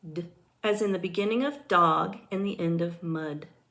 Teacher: The sound for T is T, as in the beginning of top and the end of rat. D is a voiced alveolar stop sound.